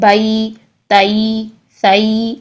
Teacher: یا ساکن سے پہلے جب زبر آئے تو اس کی ساؤنڈ ہوتی ہے آئی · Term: یائلین